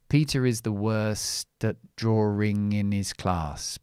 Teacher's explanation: I don't say at, because this word is a function word. So I change the vowel to the schwa.